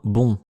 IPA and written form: bɔ̃ (bon)